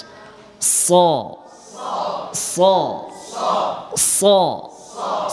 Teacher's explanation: সদ উচ্চারণ হবে জিহ্বার আগা থেকে, সামনের নিচের দুই দাঁত থেকে, বাস। স স স সফির করতে হবে।